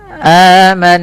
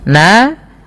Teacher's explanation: cara membacanya adalah dengan menahan bunyi suara nunnya. Aman sembari dimasukkan ke rongga hidung kita. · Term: bacaan ghunah